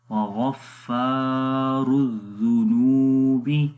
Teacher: ہیں، اس وجہ سے یہاں پر لمبا کریں گے، وغفا، اور را کے اوپر پیش ہے اس لیے اس کو موٹا پڑھیں گے اور آگے ملائیں گے، وغفار الذنوب، نون کو بھی لمبا کریں